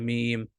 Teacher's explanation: दोनों होठों के जो खुश्की वाले हिस्से हैं इनको जब आपस में मिलाते हैं तो मीम अदा होता है